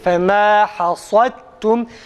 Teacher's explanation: Kalın harfin sadece kalın okunması yetmiyor. İsti'la sıfatından dolayı a sesinin çıkarılarak okunması gerekir.